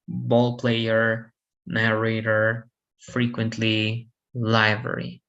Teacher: Stress, right, can be on the first, second, or third syllable, depending on how the word ends. Stress in the first syllable on the words ending in ER